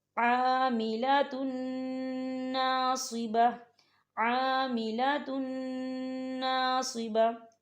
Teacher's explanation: ٹھیک ہے، یہاں دیکھیں تن، تا کے اوپر تنوین ہے اور تنوین کے بعد نون آ رہا ہے اور نون کے اوپر تشدید ہے، تو ہم تنوین کو جو ہے نون کے اندر مدغم کریں گے اور یہاں غنہ کریں گے، اور غنے کی مقدار جو ہے 2 سے 3 سیکنڈ ہوگی